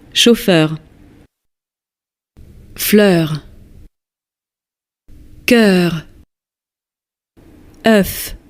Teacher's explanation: pronuncia-se com E e finalizando com arredondamento dos lábios e maior abertura da boca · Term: vogal aberta